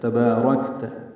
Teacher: را پر ہے، کاف باریک ہے، کاف ساکن پہ ہمس ہے. تبارکت، یا الف مدہ ہے، 2 حرکات لمبا ہے · تا کو جلدی پڑھنا ہے، با الف مدہ ہے، 2 حرکات لمبا ہے. را پر ہے، کاف باریک ہے، کاف ساکن پہ ہمس ہے